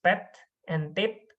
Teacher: So when you try to produce pet and tip, you will produce sounds p by trying to make a stop in your both labia, and then you open it abruptly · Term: bilabial sounds